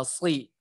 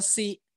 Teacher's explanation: Kemudian ketika kasroh, ya ketika kasroh yang benar adalah penyebutannya dia adalah huruf sli gitu ya, sli seperti itu. Kalau misalkan tidak naik pangkal lidahnya jadinya si, sama aja dengan huruf sin